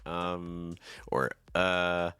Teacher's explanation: even words for instance like um or uh often use Rising intonation